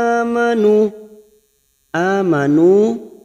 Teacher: Amanu fathah berdiri atau alif kecil di atas 2 harokat kita panjangkan.